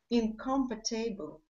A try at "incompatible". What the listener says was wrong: No. No. I mean, the phonetics were right, but the syllable stress way off. Incompatible. And these, oh, by the way, these long words with, 5, 6, 7 syllable words, we do tend to really, really emphasize that primary stress.